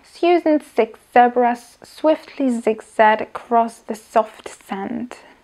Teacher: Tvoríme tak, že zuby sú spojené, špička jazyka sa jemne, veľmi jemne dotýka alveolárneho hrebenia, no a strany jazyka sú mierne nadvihnuté. Pri z už len použijeme hlasivky.